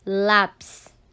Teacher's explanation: uma sílaba tônica é o lá